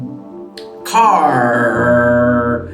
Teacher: this is a post-alveolar sound